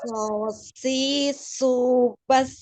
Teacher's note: Tebalkan. So-nya tidak menyong.